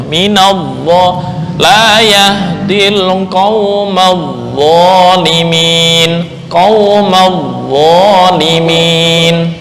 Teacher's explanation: Tapi giliran dha itu tebel, lidahnya naik ke atas atau disebut dengan isti'la.